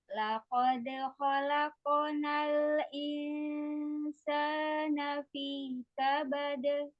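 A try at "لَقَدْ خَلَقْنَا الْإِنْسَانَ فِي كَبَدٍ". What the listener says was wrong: Jangan menggema. Laqad khalaqnal insana fi kabad.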